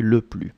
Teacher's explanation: I'm not pronouncing the S in le plus